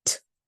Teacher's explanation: ST, which in this case it is pronounced as a true T sound. That means we pop it. T. So you can actually hear some air coming out and feel the air coming out when we say that sound.